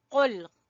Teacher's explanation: قاف موٹا ہے، ٹھیک ہے، زبان کی جڑ سے ادا ہوگا